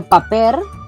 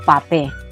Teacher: la R al final de palabra no se pronuncia